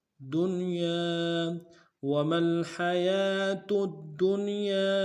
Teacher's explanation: وما الحیاة الدنیا، دال کو نون ساکن کے ساتھ ملانا ہے، نون ساکن غنہ کریں گے، یا کے ساتھ الف مدہ ہے، الف مدہ کے اوپر مدہ عارض ہے، کم سے کم 2 الف مقدار میں کھینچیں گے